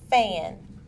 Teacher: is made using the lips and teeth and is a fricative sound and is voiceless the vocal cords do not vibrate